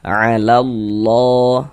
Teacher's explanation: Maka karena di sini ada lafaz Allah, sebelum lafaz Allah sebelah sininya ada ini tanda baca fathah, harokat fathah, maka lafaz Allah ini huruf lam jalalahnya kita baca tabkhim. Nah, kita baca tebal. Nah, sehingga ini kita baca 'alallah seperti itu.